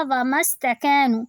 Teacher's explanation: حمزۃ الوصل ختم ہو جاتا ہے، پھر وہ پروناؤنس نہیں ہوتا، اسے نہیں پڑھا جاتا، ہم صرف پچھلے والے لفظ کو سین سے ملا دیتے ہیں